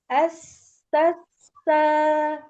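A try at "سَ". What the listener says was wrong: Belum. Sofir, hams. Ya, rokhoanya belum nampak. Ya, kalau hams itu dalam satu percikan. Gitu. Tapi kalau yang sofir, yang rokhawah, itu dia panjang. Gitu.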